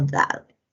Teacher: esta es una oclusiva dental. Tiene una representación, está representada por la D.